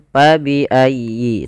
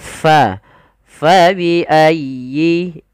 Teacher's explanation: Jangan pa bi ayyi, tapi fa dialirkan nafasnya. Karena huruf fa memiliki salah satu sifat, yaitu sifat hamus. Artinya mengalirnya nafas kita.